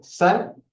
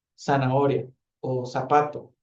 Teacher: la S ahora tenía una aspiración más fuerte y la Z no. La Z eh tenía una aspiración más suave, más débil.